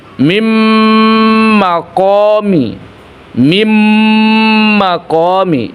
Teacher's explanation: Jadi huruf nunnya tidak lagi dibaca tapi langsung menjadi huruf mim. Ditahan. Ingat ditahan kira-kira dua harakat.